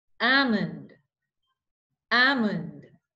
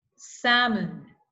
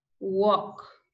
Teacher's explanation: they have a silent L. It means they are silent L words. So we don't pronounce the L.